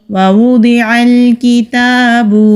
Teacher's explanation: ووضع الکتاب، واو کو ہونٹ گول کر کے ادا کریں گے۔ ضاد مستعلیہ حروف میں سے ہے تو موٹا پڑھیں گے